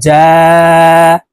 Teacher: জিম হরফ জিহ্বার মধ্যখান থেকে উচ্চারণ করতে হবে